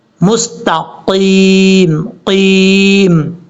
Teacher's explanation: تا کے بعد جو قاف ہے یہ قاف فل موت پڑھا جائے گا، یعنی موٹا پڑھا جائے گا، اس کو مستقیم نہیں پڑھنا، مستقیم، قیم۔